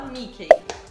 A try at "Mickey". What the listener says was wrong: Não tem o EI no final, é I.